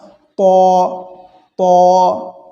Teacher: তিনটি হরফ একই মাখরাজ থেকে, কিন্তু ত বলার সময় একটু মুখটা ভর্তি আওয়াজ হবে, ফাঁকা ঘরে শব্দ হলে যেমন একটু বেজে ওঠে, কিছুটা এরকম বেজে উঠবে মুখের মধ্যে আওয়াজটা, ত ত।